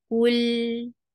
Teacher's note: You're circling lips here, but not on lam because you will straighten your lips when you will touch lam.